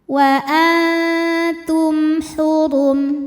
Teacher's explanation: Di sini hurufnya adalah huruf H. Maka mim sukun kita bunyikan dengan jelas, masih bunyi M dan tidak ditahan. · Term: idhar syafawi